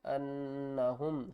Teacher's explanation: نون مشدد ہے غنہ کریں گے